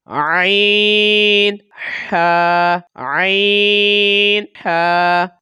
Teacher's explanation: عین، ہا کہاں سے ادا ہوتے ہیں؟ حلق کے درمیان والے حصے سے ادا ہوتے ہیں